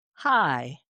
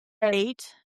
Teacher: They're one-syllable words that we kind of stretch into a two-syllable musical drawl.